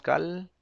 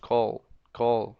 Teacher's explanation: Como la lengua le hacemos para atrás, para que la L suene, le llaman dark L, es una L más americana y suena más bonita, call.